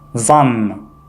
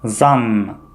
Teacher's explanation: произносится, как будто бы у вас заложен нос